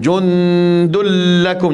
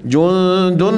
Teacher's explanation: Tak dengung. Jundul lakum, jangan jundun naik ke hidung, tak ada. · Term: idgham bila gunnah